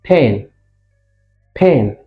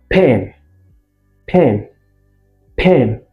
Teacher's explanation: There is a bursting forth of the air. · You see, my lips close first, and then there is a bursting.